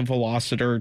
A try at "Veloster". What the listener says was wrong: I think it's Veloster. There's no Erta in there. Veloster.